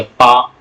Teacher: जैसे होठ बंद होते खुलते हैं तब पा निकलता है, खुले हुए होठ में आप पा नहीं बोल सकते हैं। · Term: ओट्स व्यंजन, ओष्ठ व्यंजन